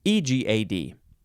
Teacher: it's an i sound at the beginning you have to emphasize the second syllable